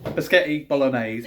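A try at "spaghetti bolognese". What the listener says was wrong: You make it sound like it's got a K and a Y in. Spaghetti bolognese. Not spaghetti.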